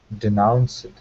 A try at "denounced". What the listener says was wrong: Just watch your ED at the end. It shouldn't denounced. Be denounced. It should be denounced. It's, what's the word? An unvoiced consonant. So it ends with that T sound.